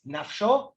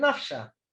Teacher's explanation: One is the kamatz vowel, the o vowel, and the other is the a vowel.